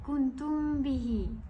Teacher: Okey, saya tidak merapatkan bibir kerana kedudukan ikhfa' syafawi sebenarnya adalah perlu dibukakan sedikit bibirnya